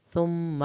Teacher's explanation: میم کی شد پہ ایک الف کے برابر دیر لگا کر